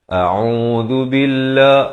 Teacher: hamzah dipangkal kerongkong, ain di pertengahan kerongkong, dua harakat